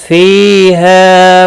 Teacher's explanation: فی یا مدہ ہے، ہا الف مدہ ہے، ایک ایک الف کے برابر کھینچ کر پڑھیں گے